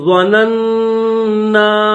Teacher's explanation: وَأَنَّا ظَنَنَّا، ظا کے بعد دو نون ہے، ایک نون کے اوپر زبر ہے اور دوسرے نون کے اوپر بھی زبر ہے، لیکن اس کے ساتھ ساتھ اس کے اوپر تشدید بھی ہے، تو پہلا جو نون ہے درمیان میں یہ جس کے اوپر زبر ہے، اس کو دوسرے نون کے ساتھ ملا کر پڑھیں گے، غنہ کریں گے